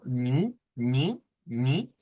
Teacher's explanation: Ahí está la N clara, está una I que es nasal, vea, con un sonido nasal